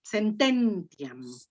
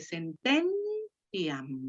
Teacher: La sílaba tónica está en ten.